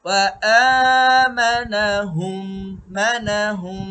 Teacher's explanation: ওয়া আমানাহুম মানাহুম, হুম এটাও গুন্না হবে, এটাকে বলা হয় ইদগামে শাফাউই। মিম সাকিনের পরে মিম যখন থাকবে তখনই গুন্না করতে হবে, আর নাম কি হবে ইদগামে শাফাউই।